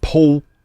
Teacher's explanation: L pronounced as W